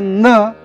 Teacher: नळाचा न हा दंतव्य उच्चार आहे